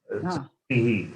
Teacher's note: Srishti being E, then Visarga is pronounced along with the preceding vowel, which is Ikara, E. Srishti, not Srishtiha.